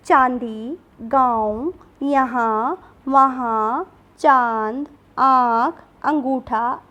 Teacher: जिन वर्णों का उच्चारण करते समय वायु नाक और मुख दोनों से बाहर निकलती है, उन्हें अनुनासिक कहते हैं